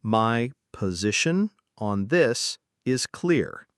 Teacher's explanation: The stress is on position and clear.